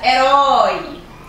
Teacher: Eu tenho duas sílabas e no momento em que eu separo, o O e o I ficam na mesma sílaba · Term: ditongo oral